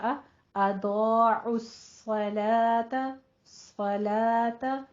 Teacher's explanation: لام باریک ہو جائے گا، تا بھی باریک ہو جائے گا، پیچھے آپ نے حمزہ بھی باریک ہی رکھنا ہے، اور نہیں کہنا.